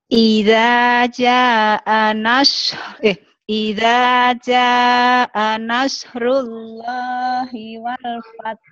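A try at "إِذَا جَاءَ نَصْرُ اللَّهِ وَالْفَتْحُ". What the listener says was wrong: Fath. wal fath. Jangan monyong bener ini monyong banget. Shotnya asal aja, efeknya naus.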